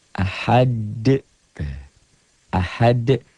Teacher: Ahad, bacanya ada e-nya. Kayak bola yang mantul, jatuh tidak langsung diam. Mengeper, mengembal. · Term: qalqalah